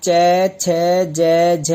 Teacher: च छ ज झ, जो तालु से आवाज आती है। कहने का मतलब है कि जो जीभ है वह दांत से थोड़ा सा ऊपर जाके छूती है, उसे तालु बोलते हैं।